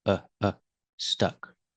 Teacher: When you say stuck, use the short uh sound like cup and up. It's relaxed.